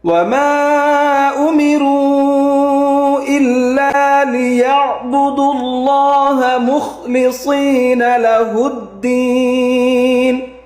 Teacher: وما এখানে 3 আলিফ টান, 3 আলিফ।